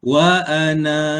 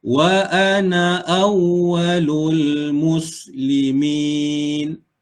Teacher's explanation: Kalau kita waqaf pada na, maka kena baca dua harakat.